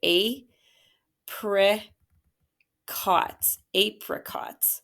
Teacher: So this is your schwa. That I is making a schwa sound. And you think it's open because in that syllable, nothing's following behind that I, but it is an open syllable exception.